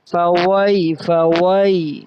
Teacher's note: اور فا کے بعد جو واؤ آ رہا ہے اس میں واؤ ہونٹ جو ہے نا وہ گول ہوں گے